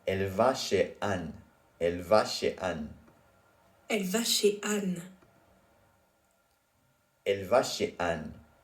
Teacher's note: you don't hear the Z in chez in the final sentence above.